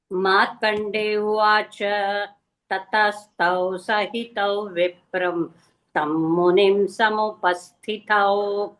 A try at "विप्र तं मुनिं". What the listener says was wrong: Not Vipram. Vipra only.